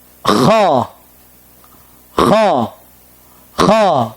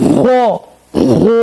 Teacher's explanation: Caranya, lidah kita menegang ke atas, bukan monyong, atau bahasa Jawa itu mencucu. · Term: isti'la